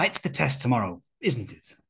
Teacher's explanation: a falling intonation shows that you are asking for agreement